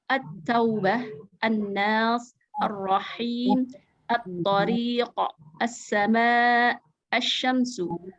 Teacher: Hukum ini alif lam syamsiyah tidak dibaca jelas, dia samar. Jadi langsung masuk ke huruf selanjutnya dengan tasdid, ikuti tasdid.